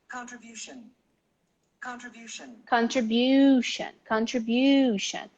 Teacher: The bu is the stress.